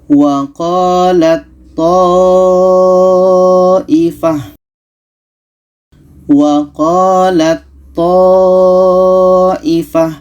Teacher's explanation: Ta ini kita masukkan ke to. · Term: idgham mutajanisen